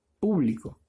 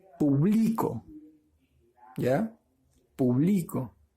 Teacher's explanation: Eso lo convierte en una palabra grave porque la mayor fuerza de voz está en la penúltima sílaba.